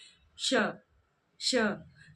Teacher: तो इस प्रकार से तालु और जिह्वा के बीच में घर्षण उत्पन्न होता है और श का उच्चारण यहाँ से होता है। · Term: तालव्य श